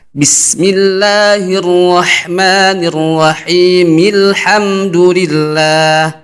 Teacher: Kalau misalkan kita mau wasol, mau lanjut ayat yang pertama dengan ayat yang kedua, maka dibaca harokat kasrah dari mim